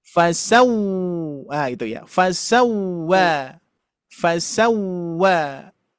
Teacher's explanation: Huruf wawu dominan memonyongkan dua bibir. Baru diucapkan.